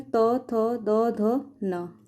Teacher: त वर्ग का उच्चारण स्थान दंत्य।